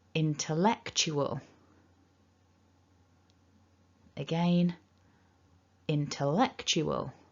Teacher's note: remembering we've got five syllables two stresses a bit of dark l happening and some schwa